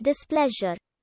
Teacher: displeasure is accented on the second syllable